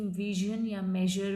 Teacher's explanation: और ज में जैसे कि विजन या मेजर में air is force through the tongue and the point just beyond एलोवेलर ridge, टंग का और एलोवेलर रिज के पीछे के हिस्से का यूज़ किया गया, दैट मीन्स ये पोस्ट एलोवेलर साउंड होगी।